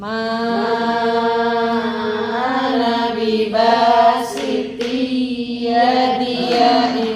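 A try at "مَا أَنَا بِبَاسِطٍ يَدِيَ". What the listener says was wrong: Kurang hati-hati. Kurang nahan dikit lagi.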